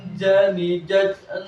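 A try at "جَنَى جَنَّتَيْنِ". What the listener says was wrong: Oke ya, jadi ditahan jangan sampai jan. Jujan ja. Jadi jangan jujan ja. Jujan ja.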